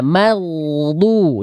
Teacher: Maghdu dari ujung tenggorokan jangan jadi nggak jelas. Madu. Maghdubi alaihim. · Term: ghain